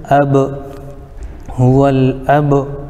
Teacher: با حروف قلقلہ میں سے بھی ہے، اس میں آواز ٹکر کھا کر الگ ہوگی